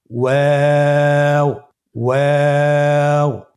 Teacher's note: ওয়াও হরফটি উচ্চারণের ক্ষেত্রে বারিক হবে এবং 3 আলিফ টেনে পড়তে হবে। · 2 ঠোঁট গোল করে মাঝখানে ফাঁক রেখে হরফটি উচ্চারণ করতে হবে।